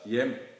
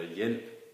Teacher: I kombination med J hører man heller ikke noget H. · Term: de stumme konsonanter